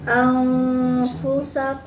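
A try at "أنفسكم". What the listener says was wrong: Masih lari ke mim, jangan lari ke mahal mim. Coba afu. Oh tadi itu amfu.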